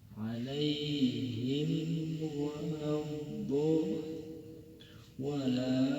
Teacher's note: Maka mim sukun dibaca jelas, jangan ditahan. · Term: idhar syafawi